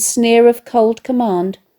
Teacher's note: The alliteration of the hard k sound and the consonance of the hard d sounds at the ends of the words link cold with command and enhance the idea of a pharaoh who is both hard and uncompromising.